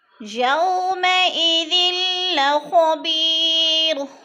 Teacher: یو پہ وولین ہے، وولین کو لمبا بھی نہیں کرنا اور جھٹکا بھی نہیں دینا · خو کو موٹا پڑھا جائے گا، پر پڑھا جائے گا کیونکہ یہ موٹے حروف میں سے ہے